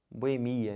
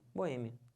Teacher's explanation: certo é minha Boêmia Então você separa assim uma boa hein a sílaba tônica é esse e que já tá até acentuado